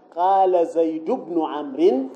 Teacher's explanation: بحذف تنوين زيد تخفيفا